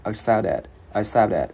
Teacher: Cái chữ t này mình biến thành chữ d tiếng Việt nhẹ